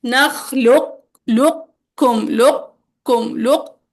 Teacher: قاف کی صفت استعلاء کو برقرار رکھنا ہے، قلقلہ چھوڑ دیں گے، باقی قاف ادا کریں گے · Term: ادغام ناقص